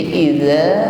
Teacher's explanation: Jadi idza, ujung lidah bertemu ujung gigi, ujung lidahnya sedikit keluar.